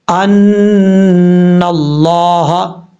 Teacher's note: اب یہاں پہ لفظ اللہ ہے، لفظ اللہ سے پہلے زبر ہو تو پر پڑا جاتا ہے، یہاں پہ اس کو موٹا پڑھیں گے